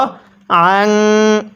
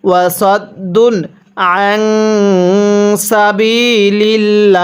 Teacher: নুন সাকিনটা গুনাহ করব কারণ নুন সাকিনের পরে সিন থাকলে নুন সাকিনটি গুন্নাহ করে পড়তে হয়